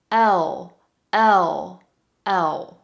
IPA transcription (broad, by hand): ɫ